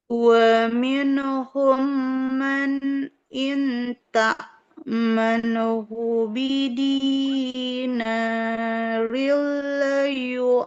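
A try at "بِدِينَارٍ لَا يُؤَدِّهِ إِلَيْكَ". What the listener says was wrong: Bidinarillah. Nunnya panjang. Bidinarillah. Untuk bacaannya, di sini koreksinya, nun sukunnya Ibu hati-hati jangan memantul. Nah, minhum tidak seperti itu. Wa minhum.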